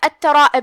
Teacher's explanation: کلمت الترائب میں یہاں بھی جو کتاب پہ تشدید ہے 2 حرف کے برابر تا کو پڑھنا ہے۔ را کا حکم ہے تفخیم کیونکہ اس پہ زبر ہے تو ہم اسے بھاری آواز میں پڑھیں گے۔ جو کہ اس کے بعد مد ہے تو ہم مد کو بھی تفخیم سے پڑھیں گے کیونکہ مد اپنے پیچھے والے حرف کا حکم لیتا ہے۔